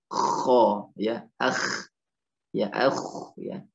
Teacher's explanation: Letaknya adalah tenggorokan paling dekat, dekat dengan pangkal lidah. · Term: huruf kh